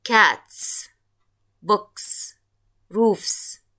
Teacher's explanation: notice that in cats books and roofs each one of these nouns end in a voiceless consonant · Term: voiceless consonants